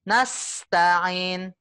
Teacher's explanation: Mengeluarkan udara dari lidah kita yang kan posisi lidah kita mepet ya, mepet langit-langit ya ketika ngomong sa gitu ya. Sa posisi lidahnya, tepi lidahnya mepet ke langit-langit. Nah, udara kan berebutan keluar tuh, Bu. Udara berebutan keluar melalui celah-celah sempit yang dibentuk oleh lidah kita. Nah, ini yang namanya sofir ya.